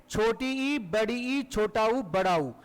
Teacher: ऐसे स्वरों के उच्चारण में जीभ ऊपर उठती रहती है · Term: संवृत